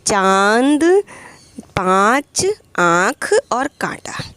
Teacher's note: अपने नाक का भी प्रयोग कर रहे हैं और गले से भी आवाज़ निकल रही है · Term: अनुनासिक